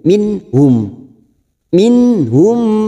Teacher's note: Lalu nun sukun bertemu ha, idhar halqi yang dibaca jelas tanpa mendengung